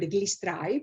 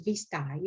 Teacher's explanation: Another substitution of the voiced velar fricative is the labiodental fricative V. An example word is the word glistrai, produced as vistai at 3-7.